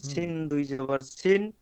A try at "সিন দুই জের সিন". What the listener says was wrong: এটা দুই জের। শুনেন, উপরে থাকলে দুই জাবার বলবেন হ্যাঁ, আর নিচে থাকলে দুই জের।